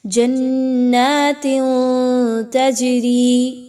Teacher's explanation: جو تنوین کی آواز ہے اس کو آپ ناک میں چھپائیے ود غنہ · جیم پر جزم کا نشان ہے، جیم ساکن ہو رہا ہے، جیم حروف قلقلہ میں سے ہے، یہاں پر اس کو ہلا کے پڑھا جائے گا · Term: اخفا